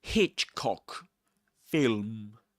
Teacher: Hitchcock, you stress Hitch